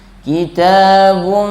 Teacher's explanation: Bibirnya tidak tertutup. Hampir tertutup. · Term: ikhfa